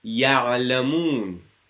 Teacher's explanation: if the ayn carries a sukoon, the sound is extended a bit. Ya'lamun. Just makes it a bit more flowy and a bit easier to pronounce.